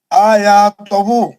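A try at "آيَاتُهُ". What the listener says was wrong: نہیں تہو نہیں، پیش پڑھو. پیش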